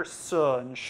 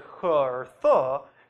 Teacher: if you compare [s] and [ʃ] to other fricatives like [x] or [θ] , you can probably hear that the first pair sound hissier and louder